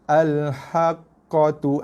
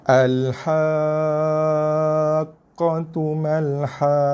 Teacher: Cukup completekan kadar panjang 6 baru tekan atau huruf qaf yang bersabdu.